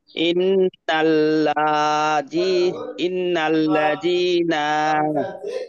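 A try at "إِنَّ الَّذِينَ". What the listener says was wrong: না, টান নেই। ইন্নাল্লাযীনা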